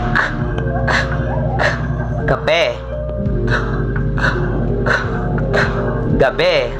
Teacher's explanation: ay ang pangalangala o velar. Ito ay mga tunog na nalilikha kapag ang likod ng dila ay dumidikit sa malambot na ngalangala. Sa ganitong paraan ay ang hangin ay pansamantalang nahaharangan bago ito palabasin.